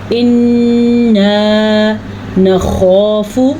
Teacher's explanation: غنہ بھی ادا کرنا ہے اور الف مدہ بھی ادا کرنا ہے، تو ہم اس کو پڑھیں گے ان نخاف، خو کو موٹا کر کے پڑھنا ہے اور اس کے ساتھ الف مدہ بھی ادا کرنا ہے اور فا کو لمبا نہیں کرنا۔